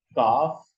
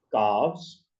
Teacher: whereas calf is voiceless, calves is voiced